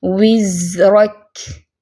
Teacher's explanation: وِزْرَكَ زا پہ کیا ہے؟ رخوہ کی صفت ہے، آواز بھی چلے گی